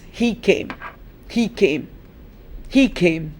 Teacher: The stress is on came.